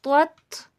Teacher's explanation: توام حرف مستعلیہ میں سے ہے، موٹا کر کے پڑھا جائے گا، اور تا سیدھا پڑھا جائے گا